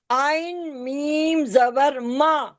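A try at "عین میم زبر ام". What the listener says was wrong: عین میم زبر ما نہیں، میم زبر ما ہوتا ہے. عین میم زبر. حمزہ میم زبر ام ہوتا ہے. عین میم زبر.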